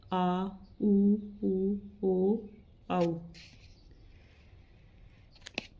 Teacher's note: जीभ का पिछला भाग सक्रिय रहता है वे पश्च स्वर कहलाते हैं